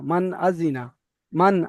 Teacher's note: হ্যাঁ, পরিষ্কার করে টান জাহির, টুন না দিয়ে জি। বিনা গুন্না জাহির করে মানে পরিষ্কার করে পড়তে হবে। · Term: ইজহার